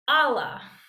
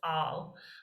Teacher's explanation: when the next word starts with a vowel then this word drops its final a and it's just all this is called an illusion and we